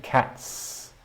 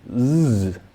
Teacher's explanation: I have a voiceless S at the end, cats. And if I make the plural of dogs, I get a voiced sibilant sound, z, at the end.